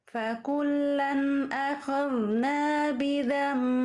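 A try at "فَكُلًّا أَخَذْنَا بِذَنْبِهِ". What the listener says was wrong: Zal ketika berharokat tadi kesalahan sedikit ya dari Ummu Hubaib. Apa zal berharokatnya?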